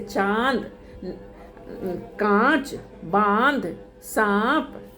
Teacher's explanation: इसका उच्चारण मुख और नाक दोनों से किया जाता है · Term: अनुनासिक